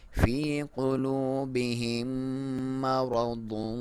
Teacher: را کو موٹا، را پہ جب زبر یا پیش ہو تو موٹا پڑھا جاتا ہے